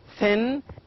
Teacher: As in thin is voiceless. It makes no vibration. There is no vibration at all.